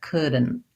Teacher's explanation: So if I'm doing couldn't, I'm going to have could, and then my NT, syllabic N and stopped T. · So it sounds like couldn't. The D, N, and T are all kind of one sound there together. Couldn't. I kind of go from the D through the N and the T.